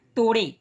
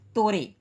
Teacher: पश्चिमी हिंदी की ड और ढ ध्वनियां पूर्वी हिंदी में र तथा रह में परिवर्तित हो जाती, जैसे पश्चिमी हिंदी में कहा गया तोड़े और हिंदी में तोरे, पूर्वी हिंदी में तोरे, जैसे उसने आम तोड़े, ठीक, वो तोरे, तोड़े की जगह पर तोरे।